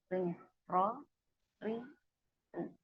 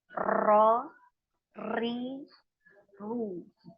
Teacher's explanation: ketika kita mengucapkan huruf ro ini kita ada getaran ya, akan tetapi getarannya ini tidak boleh melebihi dari 2, cukup 1 saja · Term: takrir